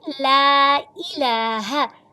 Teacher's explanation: لام کی زبر کو 1.5 سے 2 الف کی مقدار کھینچ کے لمبا کر لیں ، لام کی زبر کو آپ باریک لام کو پڑھیں گے،